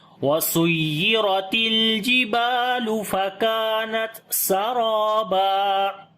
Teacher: را کو موٹا پڑھیں گے اور لمبا بھی کریں گے، الف مدہ ہے